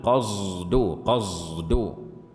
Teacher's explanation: فلا هي صاد خالصة ولا زاي خالصة، وإنما حرف بينهما